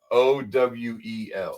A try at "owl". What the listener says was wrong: Google says it's 1 syllable. Google says you're saying it wrong. You got to say it like this.